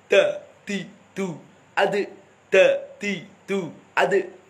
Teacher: Jadi dal ini sifatnya jahar syiddah. Jadi tidak terlalu dilepas nafas dan suaranya, harus ditahan.